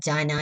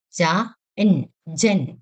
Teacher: ഹിന്ദിയിൽ ഈ അവസാനത്തെ അക്ഷരം ഹാഫ് ആയിട്ടേ വായിക്കുള്ളൂ ഈന എന്നത് ഹാഫ് ആയിട്ടേ വായിക്കുള്ളൂ ജ എന്നത് ഫുൾ ആയിട്ടും വായിക്കും അപ്പോൾ